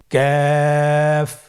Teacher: কাফের মাখরাজ হলো জিহ্বার গোড়া থেকে একটু আগে বাড়িয়ে তার বরাবর উপরে তালির সঙ্গে লাগিয়ে উচ্চারিত হয়। · কাফ উচ্চারণের ক্ষেত্রে অবশ্যই পাতলা করে উচ্চারণ করতে হবে এবং তিন আলিফ টেনে পড়তে হবে